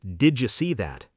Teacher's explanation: did you often sounds like didja, blending the D and Y into a j sound.